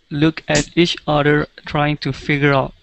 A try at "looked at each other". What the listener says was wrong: Remember, we want to use that TH sound. Looked at each other. Yeah, it's a difficult sound to make, but you definitely can do it. Everything else sounded really good. Your ed endings were wonderful. And yeah, just focus a little bit on those th sounds.